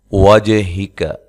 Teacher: جیم پہ قلقلہ کرنا ہے، اور یہ جو واو ہے اس کو دونوں ہونٹوں کو گول کرتے ہوئے ادا کرنا ہے